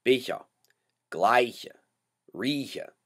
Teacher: What your mouth is doing, you're kind of closing your mouth to go to that CH sound, but you're still pushing air through